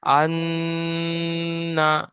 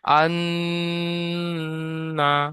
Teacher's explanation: তাজদিদ নুনের উপরে হওয়ার কারণে নুনকে এক আলিফ পরিমাণ গুন্না করে পড়তে হবে।